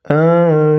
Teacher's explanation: Nunnya disukunkan dan dipanjangkan 2, 4 atau 6 harokat. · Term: mad arid lisukun